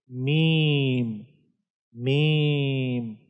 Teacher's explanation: जब दोनों होंठों के बाहर खुश्क हिस्से आपस में मिलते हैं तो इससे मीम अदा होता है